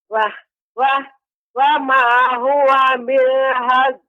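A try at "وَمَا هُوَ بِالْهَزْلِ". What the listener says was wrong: Ya, lamnya lebih diperjelas lagi Ibu biar lebih tampak. Jadi koreksinya di sini adalah pengucapan pada kata fasl dan hazl ketika disukunkan ya.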